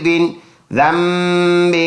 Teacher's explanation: با زیر بھی حمزہ یا زبر ای یا زیر یہ بِأَيِّ ذال اور میم پڑھیں گے نون سائلنٹ. ذال میم زبر ذم با دو زیر بن ذنب دونوں میں آواز ناک میں لے کے جائیں گے